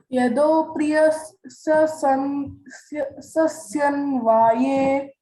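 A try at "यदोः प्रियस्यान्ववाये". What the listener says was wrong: Actually, only one S is there, but that A and then again it initially Priya, Asya, Anvavaye. 3 words. Priya, Asya, Anvavaye. Priyasya. So Priyasya is a one word.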